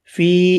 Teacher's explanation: فی یا مدہ ہے، 1 الف کی مقدار میں کھینچ کر پڑھیں گے